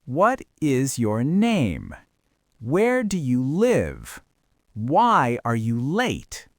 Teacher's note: And because you are asking for facts, the intonation pattern mimics a statement of fact. It falls.